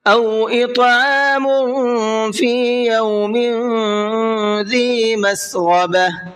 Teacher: او اطعام فی یوم ذی مسغبہ، اطعام میم کے اوپر تنوین ہے اور تنوین کے بعد میں فا آ رہا ہے، فا اخفا کے حرفوں میں سے ہے، تو یہاں تنوین کے اندر تھوڑا سا اخفا کر کے پڑھیں گے